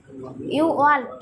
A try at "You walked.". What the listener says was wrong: ওয়াকড এখানে এল উচ্চারণ হয় না ইউ